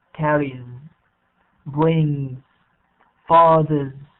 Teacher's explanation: Now, when we have other words, let's say when we have other letters other than those, okay, we call them voiced consonants, we pronounce it as Z.